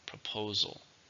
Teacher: proposal three syllables stresses in the second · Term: stresses on the second